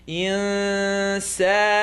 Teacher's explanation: Noon sukoon followed by seen. Tongue not touch.